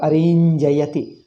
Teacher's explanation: This na changes to nya.